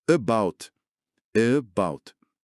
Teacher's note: O A inicial, por não ser tônico, ele relaxa e vira esse schwa.